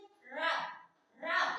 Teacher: जब हम रा का उच्चारण करते हैं तो जीभ में हमारे क्या होता है, कंपन होता है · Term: प्रकंपित व्यंजन